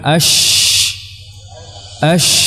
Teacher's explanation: menyebarnya suara pada huruf syin yang mana penyebaran suara ini bermula dari makhrajnya sehingga suara yang menyebar [Musik] tadi menabrak kepada dinding dalam atau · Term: tafashshi